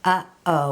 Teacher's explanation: that pause between two sounds where there's a little catch in the back of your throat · when you say uh-oh you completely close off the back of your mouth between those two sounds and that's the glottal stop